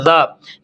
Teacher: ذال کے اوپر جب کھڑا زبر آ جاتا ہے، ٹھیک ہے جی، تو اس کو ہم ایک الف کے برابر کھینچتے ہیں